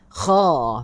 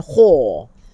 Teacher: Sedangkan dia adalah kha, bukan kho. Kha bukan kho. Ya, dia bukan huruf bibir.